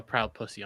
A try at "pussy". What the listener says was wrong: You added an L. You said plussy.